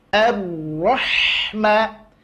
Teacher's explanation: Bukan ra, tapi ro, ya. Maka tipiskan huruf ha setelahnya seraya memberikan sifat hamas pada huruf ha, ngalir nafas. Ar-Rahma, ngalir ha-nya.